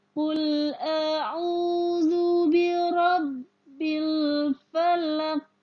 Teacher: maka qalqalah kubro, qalqalah besar. Jadi pantulannya harus besar.